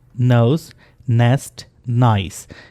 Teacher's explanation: आपकी जो टंग है वो टच करेगी एल्वियोलर रिज को, यहाँ पे, ये दांतों के पीछे जो उभरी हुई जगह है, यहाँ पे आपकी टंग जो है वो tip of the tongue touch करेगी न बोलते हुए.